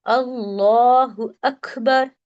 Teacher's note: لام کو اگر ہم باریک پڑھ رہے تو لا اللہ ایسا سنائی دے رہا ہے، لیکن ہمیں اسے کیسا پڑھنا ہے؟ موٹا پڑھنا ہے